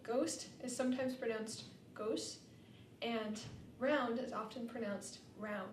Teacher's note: in African American English, when these clusters come at the ends of words, the final consonant is often removed. For example, ghost is sometimes pronounced ghost, and round is often pronounced round. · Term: final consonant cluster reduction